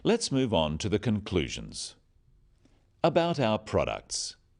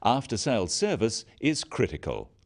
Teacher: Note the downward intonation at the end of sentences.